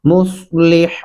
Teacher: صاد پڑھیں گے ہونٹ تھوڑے گول کر کے اور باریک ہا پڑھیں گے